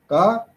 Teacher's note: unaspirated, unvoiced, voiceless stop